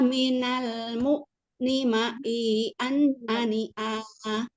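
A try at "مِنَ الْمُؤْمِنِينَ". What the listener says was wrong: Bacanya jangan dihentak. Jadinya tadi agak malah kayak ain. U, an, ani, a, na, minal. Jangan dihentak-hentak. Kalau dihentak jadinya ani, a. Bukan gitu sih bunyinya. Tapi jadi tidak pas. Biasa aja berhentinya tutup tidak suaranya. Ani, a, na, minal, mu, ni, ma, i. Terus waktu ketemu nun juga jangan hentak-hentak. Di sini kan ada u, an. Nah, itu jangan u, an.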